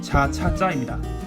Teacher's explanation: 혀 중간 부분을 입천장에 갖다 댄 상태에서 나오는 소리예요